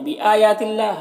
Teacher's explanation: بآیات اللہ، حمزہ اور یا دونوں میں کھڑا زبر ہے، 1 الف کے برابر کھینچیں گے۔ یہاں پر اللہ کے لام سے پہلے تا کے نیچے زیر ہے تو اللہ کے لام کو باریک پڑھیں گے۔ اور کھڑا زبر ہے ایک الف کے برابر کھینچیں گے.